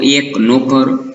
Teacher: તો એક, નોકર, આ બધા શબ્દોની અંદર એ છે, નો છે, એ સંવૃત માત્રા છે. એટલે કે એનો ઉચ્ચાર લંબાતો નથી, બોલતી વખતે એનો ઉચ્ચાર સાંકડો રહે છે